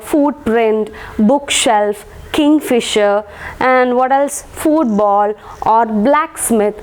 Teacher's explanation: certain words like footprint, bookshelf, kingfisher, and what else, football or blacksmith, stress will be given to the first syllable.